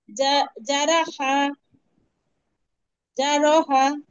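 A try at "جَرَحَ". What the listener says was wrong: হ না কিন্তু হা জবর হা জারহা জারহা আরেকবার বলেন তো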